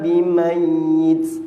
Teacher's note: Mayyit pendek je sebab dia bukan maklin. Dia sabdu.